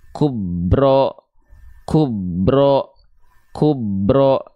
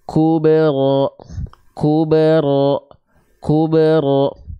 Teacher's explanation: karena huruf bnya tidak dipantulkan ya contoh perhatikan kub engak gitu huruf ba dalam kondisi sukun teman-teman harus pastikan dia dipantulkan